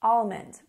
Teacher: I actually say the L usually, slightly, almond, but most people would say almond, almond with no L sound.